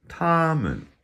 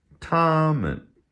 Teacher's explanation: So you hear the MEN part, it has no real tone to it. Just kind of falls off at the end. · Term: neutral tone